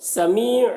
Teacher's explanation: سمیع یہاں پر یا مدہ ہے، یا مدہ کو ایک الف کے برابر کھینچ کر پڑھیں گے